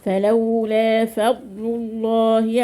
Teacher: اللام اسم الجلالة مفخمة عشان قبل ما ايه مضموم